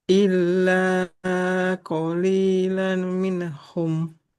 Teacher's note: selain bertasdid lamnya harus panjang